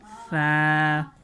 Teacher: زبان کی نوک اوپر والے دانتوں سے لگے گی